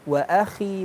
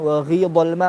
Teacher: ketika kita baca khi sama ghi, kenapa kok kedengarannya tipis? Padahal dia huruf tebal.